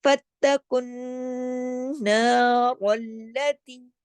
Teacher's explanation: تشدید ہے، رل لا، 2 دفعہ لام پڑھا جائے گا، پھر تا یا زیر تی 2 حرکات یا مدہ کے ساتھ کھینچے جائیں گے · تا کے اوپر سختی سے جوڑنا ہے کیونکہ تشدید ہے